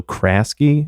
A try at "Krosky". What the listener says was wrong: No, it's Krosky. It's with an O. Krosky. I'm positive.